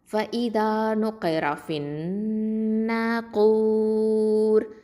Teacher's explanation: நிறுத்தி வச்சு தான் குன்னா கொடுத்து மூக்கில் நிறுத்தி வச்சு ஓதணும். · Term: அக்கமல் குன்னா